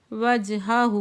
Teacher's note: من اسلم، نون ساکن کے بعد حروف حلقی میں سے حمزہ آ گیا ہے تو یہاں پھر اظہار حلقی کا قاعدہ ہوگا۔ وجہہ، جیم ساکن ہے، یہاں پہ قلقلہ ہو رہا ہے